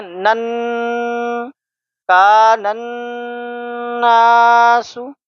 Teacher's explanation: اس نون اور میم کو ہم غنہ کے ساتھ پڑھتے ہیں، ایک الف کے برابر غنہ ہم یہاں پہ کریں گے